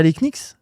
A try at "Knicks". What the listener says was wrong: Bah, on dit les Knicks. comme Le genou, c'est ni. C'est pas gni.